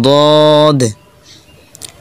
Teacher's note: হরফটি জিহ্বার গোড়া উপর দাঁতের মাড়ির সঙ্গে লাগাইলে উচ্চারণ হয়ে যাবে।